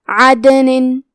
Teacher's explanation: کلمت عدن میں دال پہ جزم ہے تو ہم حرف الدال کو قلقلہ سے پڑھیں گے